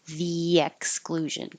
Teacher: your tongue goes high for the E and then slides down for the Y